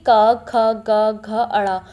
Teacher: क्योंकि पूरे क वर्ग यानी कि क, ख, ग, घ, ण उसको बोलते समय जो आवाज है वह सीधा कंठ यानी कि गले से निकलती है। इसीलिए इसका उच्चारण स्थान कंठ कहलाता है।